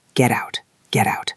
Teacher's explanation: The T sounds a bit like a soft D in American English.